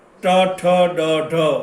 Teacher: ટ, ઠ, ડ, ઢ એ મૂર્ધન્યમાંથી નીકળે